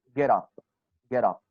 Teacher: Because get ends with a consonant sound, which is te. And up starts with a vowel sound, which is a.